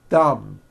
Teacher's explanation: My tongue came out, but there was never any air friction.